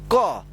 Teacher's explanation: तो क जो है ना दो अक्षरों से मिलकर बना होता है। एक तो आधा क और फिर इसमें अ का साउंड आता है तब जाकर ये बनता है पूरा क